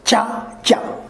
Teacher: In the picture, you will see that the tongue is touched at the top and the air is stopped there and sudden release.